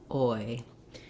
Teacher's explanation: I start with a round O-like mouth, and I end without rounding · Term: oi vowel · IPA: /ɔɪ/